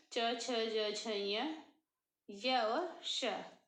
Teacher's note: च छ ज झ य और श, इनका उच्चारण स्थान तालु होता है और ये तालव्य वर्ण कहे जाते हैं